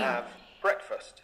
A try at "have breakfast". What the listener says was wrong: You're really good.